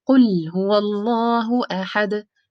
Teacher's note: The lam is a moderation letter, while when you stop on the dal, it is قلقلة letter.